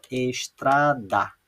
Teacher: aquela que eu falo com mais intensidade, com mais força, é o tra. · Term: sílaba tônica